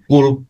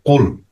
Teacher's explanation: হ্যাঁ, ডিপ থেকে, মানে জিহ্বার ডিপ থেকে কুল শব্দটা উচ্চারিত হবে। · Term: কাফটা